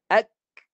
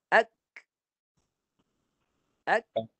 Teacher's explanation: Suara tahan. Suara kaf tahan. Syiddah. Tahan dulu. Tapi nafas lepas. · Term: hamas